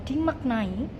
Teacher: pada kata dimaknai ini khususnya suku kata mak yang harusnya K di akhir suku kata itu tetapi diganti dengan glotal karena apabila K di akhir suku kata itu harus diganti dengan glotal.